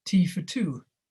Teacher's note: We work on the open transition between the /f/ and the /t/